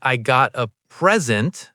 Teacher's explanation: If I say I got a present, stress on the first syllable, it's a noun, a gift